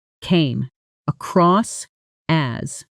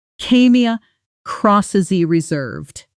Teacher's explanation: Now, at natural speed, the words blend together, came across as. The final consonant of across connects directly into as, almost disappearing into one smooth sound. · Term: connected speech